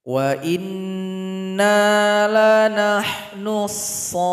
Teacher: panjangkan 6 ketukan baru tasydid